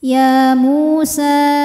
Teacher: sebab ada wau sukun yang sebelumnya berbaris damah maka huruf mim panjang dua harakat